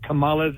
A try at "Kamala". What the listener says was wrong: No. You're putting the emphasis on the wrong syllable. He said Kamala. It's Kamala.